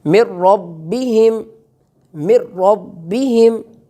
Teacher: را چونکہ مفتوح ہے یعنی اس پر فتح ہے زبر ہے تو اس کو ہم پر کر کے یہاں موٹا کر کے پڑھیں گے، جبکہ پیچھے جو را گزری وہاں کسرہ تھی زیر تھی تو ہم نے را کو باریک کر کے پڑھا، یہاں را جو ہے وہ پر کر کے موٹا کر کے اس کو ادا کیا جائے گا.